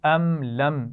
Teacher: ये दोनों मीम भी साकिन है लेकिन इनके ऊपर गुन्ना नहीं हो रहा क्योंकि हमने सीखा हुआ है कि मीम साकिन के बाद मीम आ जाए या बा आ जाए तब हम मीम साकिन पर गुन्ना करेंगे।